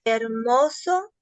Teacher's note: Hermoso es grave, a pesar de que termina con vocal, es grave, no lleva tilde. Dice la acentuación terminaría cayendo sobre la segunda sílaba, pero no lleva tilde